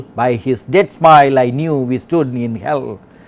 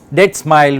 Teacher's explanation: Except for this dead smile, which is a case of spondee, we have mostly iambs.